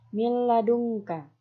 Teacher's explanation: nun mati bertemu dengan lam, maka nunnya dimatikan dan dimasukkan ke dalam huruf lam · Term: idgham bila gunnah